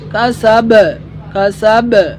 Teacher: বা কলকলার হরফ, বা হরফে আমরা ধাক্কা মারতে হবে, বাউন্স করতে হবে।